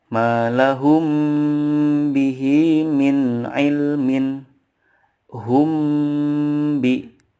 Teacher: Cara membacanya adalah dengan mendengungkan atau menambahkan gunnah yang dipanjangkan 2-3 harokat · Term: ikhfa syafawi